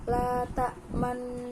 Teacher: Ismam yakni memajukan dua bibir di tengah-tengah membaca gunah nun tasydid. yaitu membacanya la ta'manna ala yusufa wa inna lahu lanasihun.